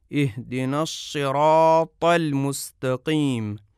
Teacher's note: آگے کی جانب سے زبان کی شکل کے کیسے زبان کا سرا نچلے دانتوں کی اندرونی جانب کو لگتا ہے، بلکہ اندرونی جانب کی نچلی جگہ کو لگتا ہے، لہذا صاد کا مخرج یہ ہے کہ زبان کا سرا نچلے دانتوں کے اندرونی طرف کو لگے